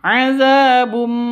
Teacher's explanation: cara bacanya itu masuk ke mim disertai dengung. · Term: idgham bi gunnah